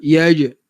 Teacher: Tengah lidah, huruf jim wastul lisan.